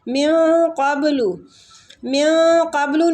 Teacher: نون ساکنہ کے بعد قاف پورا آ رہا ہے تو ہم قاف کے مخرج کے قریب جا کے اخفا کریں گے